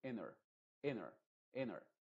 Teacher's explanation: en vez de decir enter van a decir ener ener ener sin la t